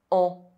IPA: ɑ̃